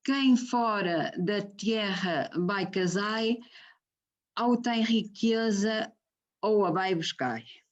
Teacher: Permite-nos ver a conservação do ditongo ou, pronunciado ou, é uma pronúncia que ocorre a miúde e que faz parte também da conservação deste ditongo ou, é uma característica também ela dos dialetos do norte de Portugal.